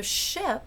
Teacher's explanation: ship is also a fricative now this is post alveolar so it's pretty far back and it's voiceless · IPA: /ʃɪp/